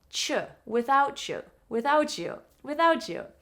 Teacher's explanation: Because the T sound in your mouth where your tongue is behind your teeth t and the Y sound Y are quite close in your mouth without chew. When you move your tongue from the T sound to the Y sound in your mouth, it makes a new sound.